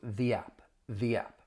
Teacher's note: In this case when the next word begins with a vowel sound that is um a time when you would use the stronger the